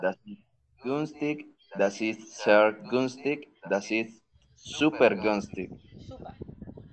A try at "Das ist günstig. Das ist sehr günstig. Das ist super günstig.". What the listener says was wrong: Está pronunciando el günstig muy bien.